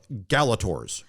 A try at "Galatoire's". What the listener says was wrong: It's spelled Galatores. Galators, but it's pronounced Galatoires.